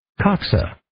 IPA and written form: 'kɑːksə (Coxa)